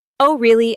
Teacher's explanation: Notice how your voice rises slightly at the end. That rising tone shows interest.